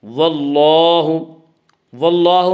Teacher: اللہ کے لام سے پہلے زبر ہے اس لیے اللہ کا لام پر پڑھا جائے گا۔ واللہ، واللہ میں مد اصلی ہوگا۔